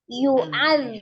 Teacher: Zal itu ujung lidahnya ada di ujung gigi seri bagian atas.